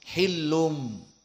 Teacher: masuk kepada mim hillum hillum makhrajnya mim maka sukunnya di sini mim makhraj syafah makhraj mulut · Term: maklub